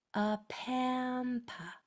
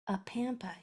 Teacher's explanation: They both make the schwa sound, A at the beginning and A at the end. And this guy in the middle, he says a because there's 2 consonants after it.